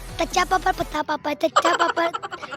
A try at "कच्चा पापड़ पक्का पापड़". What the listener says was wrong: बड़ा तच्चा नहीं कच्चा।